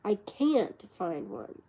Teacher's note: Falling rising tone on I